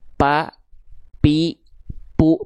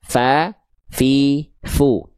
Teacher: Kalau P bibir atas dan bibir bawah. Kalau fa ujung gigi siri atas disamperin sama bibir bawah bagian dalam yang basahnya gitu ya.